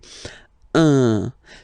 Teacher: if you listen to me, you don't hear any N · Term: the nasal